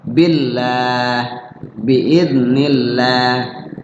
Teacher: biidnillah nah lafaz Allah dibaca tafim tark tarqid dibaca tipis ya Kenapa tipis karena sebelumnya berbaris kasrah